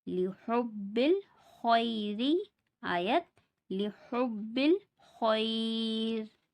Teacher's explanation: اس میں خا کو پر پڑھیں گے اور را کو باریک پڑھیں گے کیونکہ را سے پہلے یا ساکن آ رہا ہے